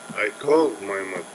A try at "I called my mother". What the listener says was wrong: Almost, but you're not making it higher. It's not I called my mother, but I called my mother. So to make that contrastive stress, you don't want to just focus on the word, but make it a little bit higher pitch. I called my mother.